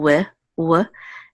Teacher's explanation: remember the V would just be W so it's w w instead of v